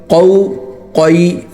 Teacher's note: قوف جو ہے وہ ہم عام جو کاف نکالتے ہیں اس سے موٹا ہوتا ہے، ٹھیک ہے، تو اس کو کو نہیں بولنا کو بلکہ موٹا نکالنا ہے، قو۔